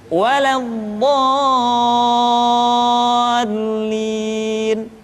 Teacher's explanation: Contoh, al-haqqah, atau kalau dalam surat Al-Fatihah, waladdallin. Dha dibaca panjang, suaranya tidak diayunkan karena setelah tanda panjang diikuti oleh huruf yang bertasydid